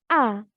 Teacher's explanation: kita membunyikan a maka rahang terbuka dan lidah depan akan terlibat